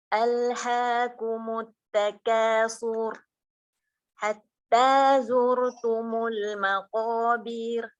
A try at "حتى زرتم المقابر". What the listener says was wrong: حتى زرتم المقابر، bukan المقابر، بير ياء، لا يوجد ياء.